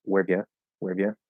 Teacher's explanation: Really fast speech, that R can get really, really light. · Wherev ya, wherev ya, where, yeah, where, instead of where, yeah. So you just kind of barely hit that R